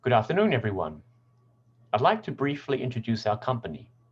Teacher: how the intonation is either partially falling or falling at the end of each thought group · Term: falling intonation